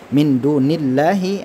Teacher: Allahnya juga dibaca tipis karena harakat sebelum Allah ini ada harakat kasrah